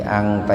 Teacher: Jadi akrob itu kan qorib, dekat gitu. Jadi angta itu dibaca ihfa samar, cuman sepintas saja karena nun mati ketemu taknya dalam satu kata